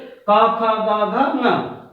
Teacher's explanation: क, ख, ग, घ, ङ का उच्चारण कंठ से होगा।